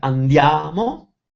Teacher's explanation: some four-syllable words like andiamo are accented on the third syllable